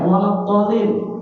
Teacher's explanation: Di situ ada mad lazim musaqqal kalimi. Nah, panjangnya pun ada 6 sampai 7 harokat